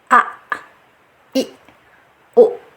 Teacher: Nah, kita hamzah yang ini yang kedua akan kita sukunkan seperti a, i, u. Nah, di situ ada tertahan a, i, u. Nah, jadi tidak ada angin yang keluar. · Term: tertahannya suara